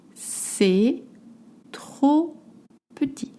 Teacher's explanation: please don't pronounce the T at the end.